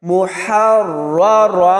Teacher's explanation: ہا کو را کے ساتھ ملائیں گے تو سختی سے پڑھا جائے گا، اور را کو پر یعنی موٹا پڑھیں گے، اور یہ والا را بھی موٹا پڑھا جائے گا۔